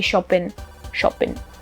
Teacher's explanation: And then off the ing words, you just drop the G and you just sound and you just end the word with the N. So shopping, you just shopping, you would say shopping, shopping.